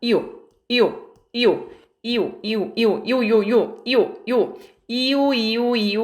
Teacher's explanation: 여러분, 요는요, 이렇게 이하고 오가 이어진 발음이에요. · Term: 반모음